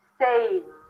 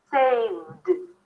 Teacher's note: The V is a voiced consonant, so the ed is pronounced as a D. Saved. There is no vowel here, okay?